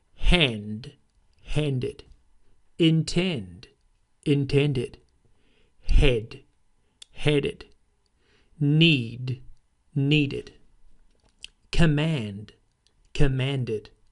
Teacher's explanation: you need to apply an id sound to the ed ending